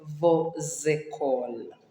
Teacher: there we have liaison because école starts with a vowel. We join the S on vos and the E with sound Z.